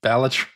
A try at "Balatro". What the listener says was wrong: Keep putting the emphasis on the wrong syllables.